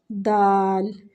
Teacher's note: دال میں زبان کی نوک دانتوں کے ساتھ ٹچ ہوتی ہے، ٹھیک ہے؟ دال جب ہم ادا کرتے ہیں نا تو زبان کی جو نوک ہے نا وہ دانتوں کے ساتھ ٹچ ہوتی ہے، دال، ٹھیک ہے؟